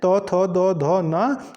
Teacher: जो त् वर्ग में आते हैं त थ द ध न तो ये दंत में आते हैं